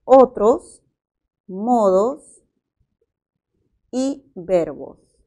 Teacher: Bien, como vemos, además están subrayados los dos últimos segmentos de cada una de estas tres palabras y son especialmente la O, y sabemos que el fonema O es un fonema vocálico medio y posterior, ¿verdad? Y la S es un fonema fricativo y por el punto es alveolar y a la vez es sordo.